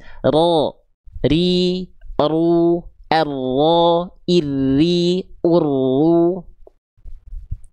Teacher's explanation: Getarannya sedikit tapi tetap jelas. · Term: huruf ro